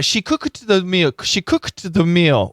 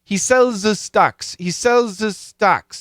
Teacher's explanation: we push the D or the T and the th together the Z and the S together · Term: push the sounds together